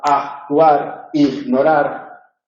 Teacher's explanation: neutralización de K y G cuando se sustituye por J